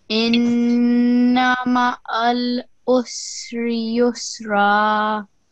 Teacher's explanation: This is a noon with a shadda, so 2 seconds nasal sound for this.